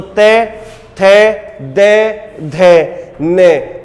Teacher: ते वर्ग का जो उच्चारण स्थान होगा बेटा वो दंत होगा